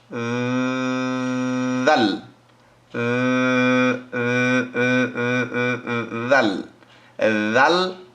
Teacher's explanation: জিহ্বার আগা উপরের দাঁতের আগা